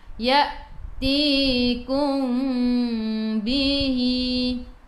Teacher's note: Innama ya'tikum, ti 2 harakat, ada ya mad asli. Kum mim bertemu dengan ba, ikhfa syafawi, dengung 2 harakat. Nak rapatkan bibir boleh, jangan tekan. Nak renggangkan bibir seolah-olah ada sehelai kertas di tengah-tengah, boleh pilih nak yang mana, jangan balah.